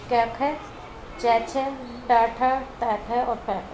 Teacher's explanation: प्रत्येक वर्ग के प्रथम और द्वितीय वर्ण यानी क, ख, च, छ, ट, ठ, त, थ और प, फ, ये आता है हमारा अघोष में।